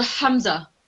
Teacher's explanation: Hamza is the bottom of the throat. So when you're saying Hamza, you should feel a bit of pressure near your chest.